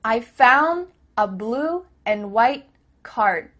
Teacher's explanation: Here the word and is being reduced. Just cut off that final D sound.